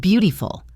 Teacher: The word beautiful has a flap T in the middle, so it sounds like beautiful.